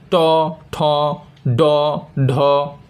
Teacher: জিভের সামনের অংশ উপরে গিয়ে তালু স্পর্শ করে বায়ুপথে বাধা সৃষ্টি করে ধ্বনিগুলো উচ্চারিত হয় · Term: মূর্ধন্য ধ্বনি